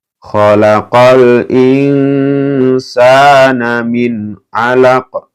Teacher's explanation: Min ini nun sukun bertemu dengan ain, ini idhar ya, dibaca jelas ya.